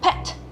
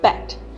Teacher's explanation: Both of these sounds use your lips, but p is voiceless and b is voiced.